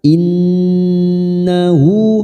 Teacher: Nun yang bertasdid gunnah musaddadah kita tekan selama 3 harokat